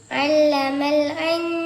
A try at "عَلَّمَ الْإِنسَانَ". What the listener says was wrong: ഇൻസാനല്ല, ഇൻസാന. ഒന്ന് ഐനും ഒന്ന് അംസ് അലിഫാണ്. അല്ലമൽ ഇൻസാന.